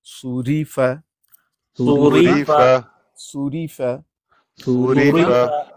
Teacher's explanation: یہ را کے نیچے زیر ہے، اس کو باریک پڑھتے ہیں